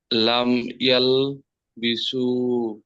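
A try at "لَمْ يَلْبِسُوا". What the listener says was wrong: মাশাআল্লাহ, লাম ইয়ালবিসু, ঠিক আছে, মাশাআল্লাহ, অনেক সুন্দর হয়েছে।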